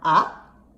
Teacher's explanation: represented by this little bar so it sounds like ah and the second tone goes up and it's abrupt · the second tone goes up, and it's abrupt. It's represented by this mark that just goes up like that, and it's pronounced ah. · third tone falls in pitch, and it goes up again, and it looks like this, like a little V or a little U, and it's pronounced ah.